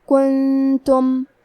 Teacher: کلمت کنتم میں نون ساکن ہے، پھر حرف التا ہے، یہاں بھی حکم ہے اخفاء، تو ہم یہ حکم کو غنہ کے ساتھ ادا کریں گے